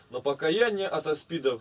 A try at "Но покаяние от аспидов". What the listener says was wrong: От аспидов все нет и нет. Все просто ударение, все время как француз какой, на последнее.